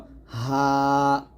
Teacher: এই হা টা আমরা হলকের শুরু থেকে নরমাল ভাবে চিকন করবো না চাপ দিব না নরমাল ভাবে উচ্চারণ করব হা তাহলে এটা হবে হা এটা বলতে